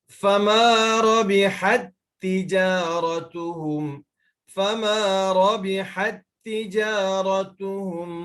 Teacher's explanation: So ta pertama tu kita masukkan dengan ta kedua. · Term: Idgham mithlaini